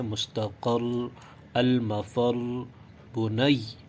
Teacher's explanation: مثلا مستقر، المفر، بنی، ٹھیک ہے، اصل الفاظ ہیں مستقر، المفر، بنی، اور وقف کے بعد یوں پڑھیں گے: مستقر، المفر، بنی، اور یہ آخری حرف پہ زور دینا ضروری ہے تاکہ تشدید کی وضاحت ہو · اس کی ادائیگی کا طریقہ یہ ہے کہ مشدد حرف سے پہلے حرف پر زور دے کر وقف کیا جائے